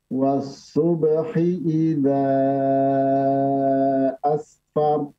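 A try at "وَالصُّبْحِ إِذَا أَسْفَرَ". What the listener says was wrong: Afwan, pakai sin ya. Asfar, asfar. Coba ditebalkan afwan ra-nya.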